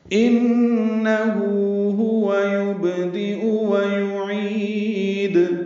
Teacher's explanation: دو ہا ہیں یہاں پہ، انہ ہوا، ہوا جلدی پڑھنا ہے، یبدئ با ساکن پہ قلقلہ ، دال جلدی اور معروف پڑھیں گے، حمزہ یا کی شکل